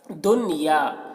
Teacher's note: نون میں یہاں پر اظہار ہوگا، نون کو جلدی پڑھیں گے